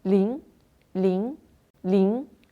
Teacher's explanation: ce pinyin est composé d'une voyelle nasale à l'arrière. Le son sort du nez. On fait une prononciation nasale.